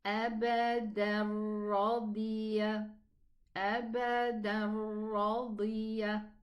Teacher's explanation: No ghunna when I pronounce the ra. Okay, it's idgham, but without a ghunna because it's complete idgham.